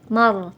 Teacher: Ro sukun dibaca tebal atau tafkhim. Mar, tidak boleh mar tapi tebal.